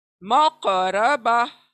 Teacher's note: काफ हिलेगा हलक के अंदर, डबल साउंड प्रोड्यूस करेगा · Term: कलकला